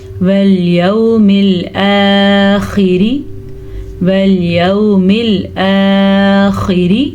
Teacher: बिल्लाही वल यौमिल आखिरी, वल यौमिल आखिरी, खा को पुर पढ़ेंगे क्योंकि खा तो हमेशा ही पुर पढ़ा जाता है बेशक इसके नीचे ज़ेर हो, लेकिन रॉ को हम बारीक पढ़ेंगे क्योंकि रॉ के नीचे अगर ज़ेर आ जाए तो रॉ बारीक ही पढ़ी जाती है। रॉ पे ज़बर या पेश हो तब रॉ पुर पढ़ी जाती है।